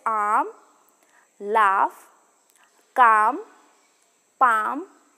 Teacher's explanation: the tongue lifts a fairly open oral cavity and it and this is the only back vowel that is completely unrounded · sew and the last back vowel is the long ah sound it is a low back vowel the lowest of the back vowels the tongue lifts a fairly open oral cavity and it and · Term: long A sound